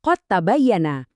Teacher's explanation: Karena mereka ini berbagi tempat asal yang sama, lidah secara alami cari jalan pintas. Kamu ngeleburin dalnya dan langsung lompat ngebunyiin ta yang digandakan.